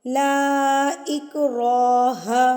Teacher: را کے اوپر جب زبر آ جاتی ہے تو را پر یعنی کہ موٹا پڑا جاتا ہے